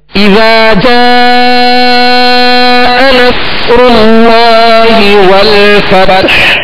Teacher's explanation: صاد ساکن ہے لہذا اس کی آواز ہلے گی نہیں, صاد کو پر پڑھنا ہے, سیٹی کی آواز میں پڑھنا ہے